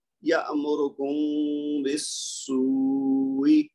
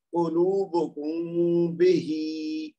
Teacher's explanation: میم کو تھوڑا سا لمبا کرنا ہے دو حرکت تک, اس کی آواز ناک میں چھپانی ہے اور پھر با کی آواز نکالنی ہے, تو یہ صحیح ادا ہو جائے گا. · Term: اخفاء شفوی